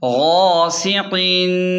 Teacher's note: سین کی سیٹی واضح کریں اور قاف کو موٹا پڑھیں